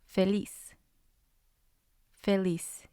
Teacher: So the stress is going to be on lis.